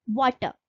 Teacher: और जैसा कि अभी मैंने आपको बताया था कि जो अमेरिकन इंग्लिश है वो रॉटिक होती है, मतलब वहां पे आर का उच्चारण किया जाता है, और जो ब्रिटिश इंग्लिश होती है वो नॉन रॉटिक होती है, मतलब वहां पर आर का उच्चारण नहीं किया जाता है